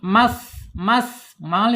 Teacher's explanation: Kemudian di sifat hamas ya, sa ini harus dialirkan ketika dia sukun. Mas mengalir dia.